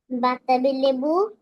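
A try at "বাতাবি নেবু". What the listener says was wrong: বাতাবি লেবু, হ্যাঁ, লেবু নয়, নেবু, হ্যাঁ।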